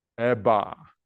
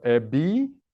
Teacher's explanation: Did you feel your tongue being much more towards the back when you say eba versus ebi? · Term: co-articulation